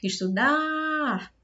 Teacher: O dar é a sílaba tônica.